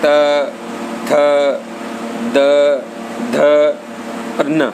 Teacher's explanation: त अल्प प्राण अघोष है, थ महाप्राण अघोष है, द सघोष अल्प प्राण है और ध सघोष महाप्राण है। जबकि न सघोष अल्प प्राण और नासिक्य है। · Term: दंते